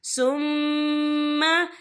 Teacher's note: यहाँ मीम मुशद्दद है, यहाँ पर गुन्ना होगा